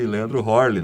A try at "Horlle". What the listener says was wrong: não. que na verdade É Herle, porque é o tremado, né? E o tremado em alemão é E, no caso.